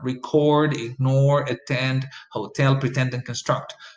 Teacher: all of this are two syllable words that receive the stress on the second syllable